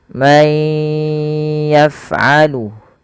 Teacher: Yang pertama langkahnya adalah masukkan suara nunnya kepada huruf ya dan ditahan. May yaf'alu, hati-hati, dan pada huruf fa jangan memantul, jangan may yaf'alu.